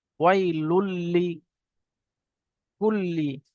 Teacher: আর যখন তানবিনের পরে বা নুন সাকিনের পরে লাম অথবা র আসে, তখন বিনা গুণনায় পড়তে হয়। বিনা গুণনায় তানবিনের সঙ্গে লামকে মিলিয়ে পড়তে হবে।